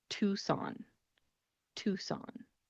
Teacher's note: the C in this word is not pronounced